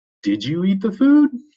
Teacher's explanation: when you ask a question sometimes your voice rises at the end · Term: intonation